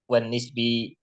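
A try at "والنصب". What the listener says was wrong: wan nasbi. Wan nasbi bukan wan nisbi.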